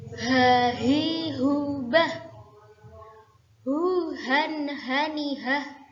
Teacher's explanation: Huruf H memiliki sifat hamas atau berdesis dan rokhawah atau bersuara lunak. Jadi cara membacanya nafasnya lepas, terdapat desisan dan bersuara lunak atau tidak ngorok.